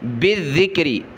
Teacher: با کو زال کے ساتھ ملایا، زال کو کاف کے ساتھ، زال پر زبان نکالیں گے